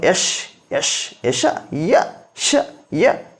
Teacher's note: ತಾಲುವಿನ ಸಹಾಯದಿಂದ ಹುಟ್ಟುವುದರಿಂದಾಗಿ ಇವುಗಳನ್ನು ತಾಲವ್ಯಗಳು ಎಂದು ಕರೆಯುತ್ತೇವೆ